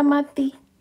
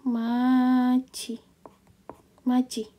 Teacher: huruf D dan T kalau bertemu dengan I bacanya itu jadi C